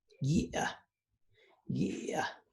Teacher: I hope that you guys can hear the creaky, the check, and the breathy at the end.